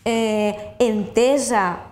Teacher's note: un participi que s'escriu amb una S i es pronuncia S sonora